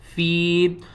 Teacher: فا یا زیر فی، یہ دیکھیں یا ساکن ہے اور اس سے پہلے دیکھیں زیر ہے، حروف مدہ ہے. فی کو ہم ایک الف کے برابر کھینچ کر پڑھیں گے